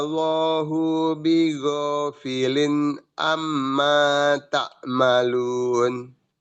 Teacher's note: Amma panjang 2 harokat.